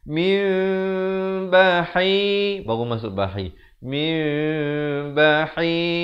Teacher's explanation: Asalnya mim baris bawah bertemu nun bunyi min, tetapi bila datang ba jadi mim, tetapi dibaca 2 harakat. Bibir itu sekadar bersentuhan ataupun hampir bersentuhan, dua-duanya betul. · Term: hukum iqlab